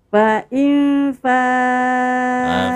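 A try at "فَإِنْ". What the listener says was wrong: Fa'in dengungnya lama dong.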